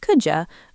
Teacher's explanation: Our mouths are lazy. Moving from a D sound to a Y sound takes effort, so we blend them into a J sound.